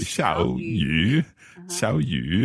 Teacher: So it's a third tone that becomes a second tone